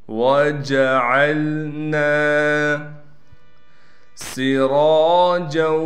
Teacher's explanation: سین کو صاف کر کے سیٹی نکال کر پڑھیں گے